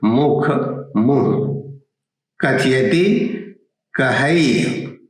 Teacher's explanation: तो आप देखिएगा कि ये तमाम जो महाप्राण ध्वनियां हैं उसमें सिर्फ ह रह गया है।